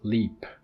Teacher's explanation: So it's the alveolar lateral approximant, the le.